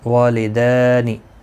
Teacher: دال کے اوپر کھڑی زبر ہے، ایک الف کی مقدار کے برابر کھینچ کر پڑھیں گے